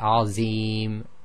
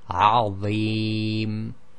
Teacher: that heavy sound comes from moving the tip of the tongue slightly in onto the inside of the upper front teeth.